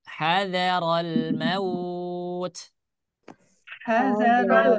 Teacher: jangan sampai dia menjadi huruf o tapi dia harus menjadi huruf u